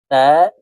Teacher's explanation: খারা জবরের উচ্চারণ উপরের দিকে ধাবিত করে এক আলিফ টেনে পড়তে হবে